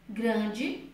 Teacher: Grande se escreve com E, porém se pronuncia com I.